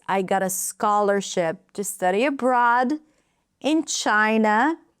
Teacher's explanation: Scholarship abroad China. Those words are longer. Everything else is shorter and reduced.